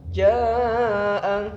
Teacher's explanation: Kemudian anja, jaa di sini terdapat hukum bacaan mad wajib mutasil, karena di sini ada mad tabi'i bertemu dengan hamzah dalam satu kalimat, dibaca panjang ketika, karena ini diwasol berarti dibaca panjang 5 harokat, kalau diwaqaf 6 harokat panjangnya